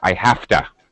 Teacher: I have to go. Like the V sound turns into an F.